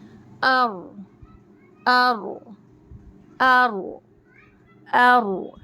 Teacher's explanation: है उस back side को मसूड़ों को टच करना है और इसमें तकरार भी होंगी यानी थोड़ी सी वाइब्रेट के साथ र अदा होगा · یہاں ہمیں زبان کی نوک کو اوپر تالو کی طرف اٹھانا ہے، اور نوک کا جو بیک سائڈ ہے اس بیک سائڈ کو مسوڑوں کو ٹچ کرنا ہے، اور اس میں تکرار بھی ہوں گی، یعنی تھوڑی سی ویبریٹ کے ساتھ رو ادا ہوگا